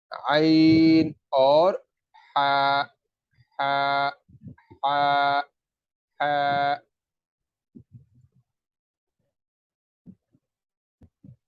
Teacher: گلے کے وسط حلق یعنی گلے کے درمیان سے اس کی ادائیگی ہوگی